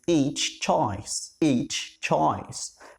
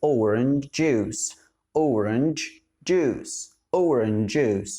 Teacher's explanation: صوت التش وصوت الج الاثنين ما بندمجهمش لو الكلمة انتهت بيها واللي بعدها بدأت بيه